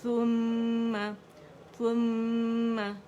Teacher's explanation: میم مشدد اور ہر غنہ مشدد، تو اکمل گریڈ کا غنہ کریں گے، 2 2.5 3 تک آواز چلی جائے گی